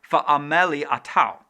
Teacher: That break between the two A's is the okina, or glottal stop.